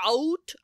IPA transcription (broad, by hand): æut